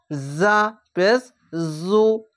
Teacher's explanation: ঝিন ঝিন করে আওয়াজ করেই পেশ দিয়ে উচ্চারণ করবেন